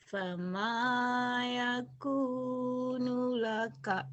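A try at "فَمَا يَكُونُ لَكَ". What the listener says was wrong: Nunya pendek.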